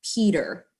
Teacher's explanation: in the middle of a word t is not t it actually sounds like d